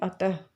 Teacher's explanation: इसके पीछे विसर्ग लगता है तो इसको हम कैसे बोलेंगे अतः तो ये जो बिंदु है इसकी आवाज जो होती है उच्चारण जो होता है वो किसके तरीके से होता है ह के तरीके से